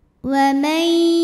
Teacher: Maka nunnya masuk ke ya, wa may disertai bunyi dengung. Jadi di sini bunyinya tahan dulu. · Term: idgham bi gunnah